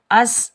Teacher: سین سختی اور سیٹی والا حرف ہے، سین پر ہم سیٹی کی آواز نکالیں گے ، اس اور بغیر کھینچے پڑھیں گے،